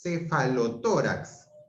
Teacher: Mayor fuerza de voz en la O, en la TO, que es una palabra grave, termina en X.